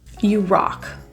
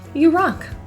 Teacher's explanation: In the word rock, that O is pronounced with an open, lip position.